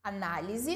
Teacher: análise, o na é a mais forte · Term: sílaba tônica